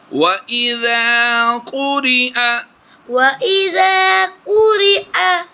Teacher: جب بھی حمزہ ایسی کنڈیشن میں ہو کہ یا کے اوپر ہو تو پھر یا کو نہیں پڑھیں گے بلکہ حمزہ زبر آ کی آواز دیتے ہیں ہم